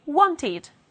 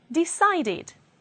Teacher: In American English, they will pronounce a schwa instead of the short I.